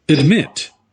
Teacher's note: 2 sílabas, certo? E eu quero saber a sílaba tônica, stressed syllable, é a segunda.